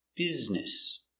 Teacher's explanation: stress on the first syllable, business